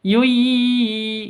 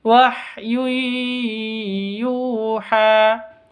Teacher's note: Tanwin bertemu dengan ya, cara bacanya masuk ke ya disertai dengan dengung. Yui, itu kan masuk ya.